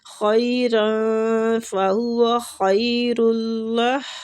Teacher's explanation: را پہ جو تنوین ہے اس کا بھی اخفا کریں گے